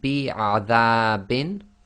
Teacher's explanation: the dal fatha alif, that's normal 2 long